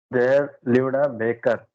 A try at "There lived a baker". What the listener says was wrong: you saying lived baker? Lived first there, then you will say lived, you will pause, and then a separate, a baker separate. Again, you are saying it in one go only. One word is equal to 1 second. You are saying this in one breath.